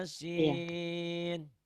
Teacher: Iyanya jangan kepanjangan ya satu alif.